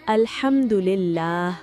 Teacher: यहां हा गले के दरमियान से अदा होता है। अगर कोई शख्स इसे अलहमद के बजाय अलहमद पढ़ दे यानी हा को सही मकरज से अदा ना करे तो लफ्ज का मानी बदल जाता है और यह गुनाह और हराम है।